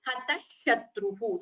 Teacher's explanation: So when you combine visarga with shakara, you combine the sandhi and chant it as hatah shatruhu. So instead of hataha shatruhu, we chant it as hatah shatruhu.